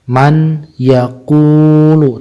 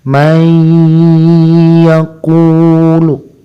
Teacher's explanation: ketika masuk ke huruf ya maka harus ditahan sepanjang dua harokat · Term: idgham